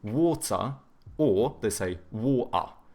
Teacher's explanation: they do a schwa instead of pronouncing the R